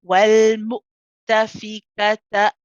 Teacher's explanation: So after ta, stop the sound. Start again for the hamza.